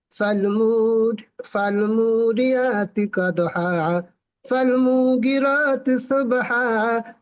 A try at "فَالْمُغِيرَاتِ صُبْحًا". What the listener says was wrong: মুগিরতি, মুগি গয়েন টান আছে। সব না, সুব।